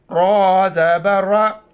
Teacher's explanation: را پر چون پہ زبر ہے، را کو موٹا کر کے پڑھیں گے